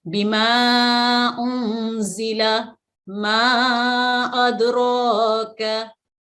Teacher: माहिरीन तजवीद के नज़दीक इसको लंबा पढ़ने के लिहाज से मद्दे मुनफसिल को 3 से 4 सेकंड के बराबर वक्त देते हैं। यानी इसको लंबा करना है तो 3 से 4 सेकंड के लिए आप इसको खींच सकते हैं।